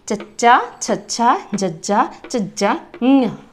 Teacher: जदों इन्हां व्यंजनां दा उच्चारण हुंदा है तां जिहड़ी साडी जीभ आ ओह तालवे दे कठोर हिस्से नूं छूंदी है। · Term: कठोर तालवी